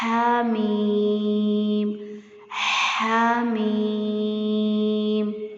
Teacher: یہاں پہ ہا کو واضح کرنا ہے، ٹھنڈی سانس کی آواز آئے